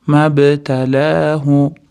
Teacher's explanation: B qolqola, ya'ni qolqola harf bo'lganligi uchun tebratamiz.